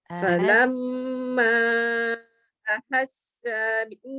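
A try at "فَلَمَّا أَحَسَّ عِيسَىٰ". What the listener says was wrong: Sa tak boleh panjang. Ahassa Isa.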